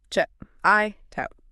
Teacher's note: >> Right, they link the sounds to keep the breath moving. So, the hard letter K sound at the end of the word check glues directly onto the beginning vowel sound of the word it. >> So, the K sound physically sticks to the I sound.